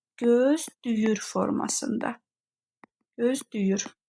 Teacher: İkinci Ə hərfinə aid olan burada gözləyir sözündəki Ə saitimiz isə keçdi Ü saitinə